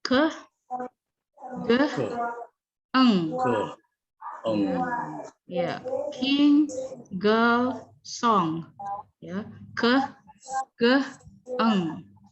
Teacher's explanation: the back of the tongue against the soft palates, ya. Velum, ya, soft palates in the back of your mouth here, ya. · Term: velar